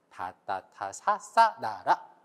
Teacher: 거기서 소리가 나는데 한국어는 그 부분에서 대부분의 소리가 납니다. 그래서 여러분 아마 다를 소리 내기 위해 준비를 할 때 여러분 혀가 윗니 뒤에 가서 만나는 것을 알 수 있습니다. 다따타 사싸 나라, 굉장히 많은 소리들이 여기에서 소리가 납니다. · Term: 치조